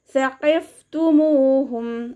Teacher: മീമിൻ്റെ കൂടെ വാവ് മദ് വന്നു, 2 കൗണ്ട് നീട്ടിക്കൊടുക്കുക